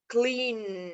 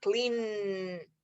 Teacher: sí puedo alargar la N, clean, y vibra mi garganta. Entonces, por eso decimos que es voiced sound.